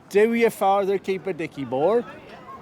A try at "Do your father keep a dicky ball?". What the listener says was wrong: No, you don't roll your R's at the end. Do your father keep a dicky ball? Do your father keep a dicky ball?